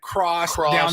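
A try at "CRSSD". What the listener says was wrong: It's not crossed. It's cursed. No vowels allowed.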